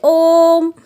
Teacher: तो यहाँ पर ओ को देर तक बोला गया। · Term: प्लुप्त स्वर